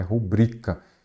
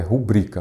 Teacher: a pronúncia dessa palavra é rubrica. Então, ela é a sílaba forte, é a penúltima. Então, ela é uma paroxítona.